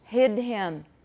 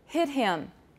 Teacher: the voiceless has a higher pitch so you'll find that voicing will drive the pitch down and